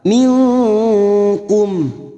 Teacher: kita samarkan bunyi nun sukun dan mendengung selama tiga harakat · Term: ikhfa Hakiki